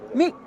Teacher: So, mig is very, very short. It's almost a glottal stop.